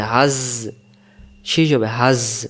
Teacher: জায়ের সাথে, হাজ, শীষ হবে হাজ। যা অক্ষর সামনের নিচের দাঁতের আগা থেকে শীষ দিয়ে বলতে হবে হাজ।